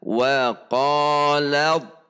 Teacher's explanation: huruf ta dilebur sifat dan hurufnya kepada huruf yang ada didepannya sehingga dibacanya adalah wafel lab jadi langsung istihlak · Di sini idghamnya adalah idgham sempurna, idgham kamil. Maka huruf ta dilebur sifat dan hurufnya kepada huruf yang ada di depannya